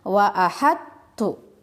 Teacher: Tapi karena bertemu dengan huruf ta yang sifat dan makhrajnya sama dengan huruf to, maka berlakulah hukum idgham mutaqaribain. Cara membacanya dengan memasukkan huruf to ke dalam huruf ta. Jadi to-nya tidak terbaca.